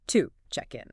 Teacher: to isn't pronounced with its full strong ooh vowel sound like if you said the word to. Instead it gets reduced. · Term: schwa sound